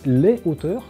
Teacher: on prononce les hauteurs sans faire la liaison entre E et O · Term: H aspiré